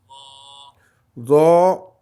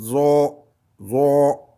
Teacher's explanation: Derrière, complètement derrière. Zo, disons un Z au fond de la gorge